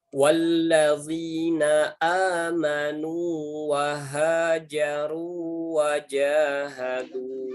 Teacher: Jadi tetap dibaca mat panjang, tidak boleh diidghamkan ke huruf berikutnya.